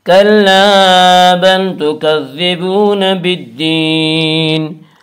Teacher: الف مدہ کو 1 الف کے برابر کھینچ کر پڑھیں گی۔ کلا بل تکذبون، واو مدہ وہ جو ساکن ہو، اس سے پہلے پیش ہو، واو مدہ کو 1 الف کے برابر کھینچ کر پڑھیں گے۔